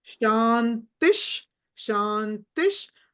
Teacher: విసర్గ తర్వాత శకారం ఉంది కాబట్టి ఫస్ట్ విసర్గ సకారమై శకారమై అవుతుంది